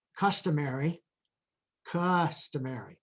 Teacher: length loudness and Pitch rise so if I say customary customary there's a kind of a little rise a little emphasis on the first syllable